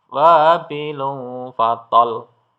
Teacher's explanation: Ya, jadi di sini ada huruf lam bertasdid. Ya, kalau diwaqaf maka dia seolah-olah lamnya ini sukun dan di double